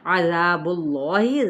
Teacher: اس میں جلالہ کا لام پر پڑھا جائے گا